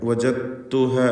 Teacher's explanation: വജത്തുഹ എന്ന് പറയുമ്പോൾ ദാലിൻ്റെ ശബ്ദം അല്പം പോലും ഉണ്ടാവുകയില്ല. തായിന് ശബ്ദ കൊടുക്കണം. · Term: ഇദ്ഗാം അൽ മുതജാനിസൈൻ അസ്സഗീർ